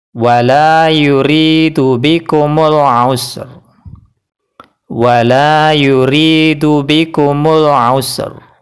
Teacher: ketika kita mengucapkan huruf ro dengan tebal atau tafkhim yaitu mengangkat pangkal lidah dan tengah lidah membentuk permukaan cekung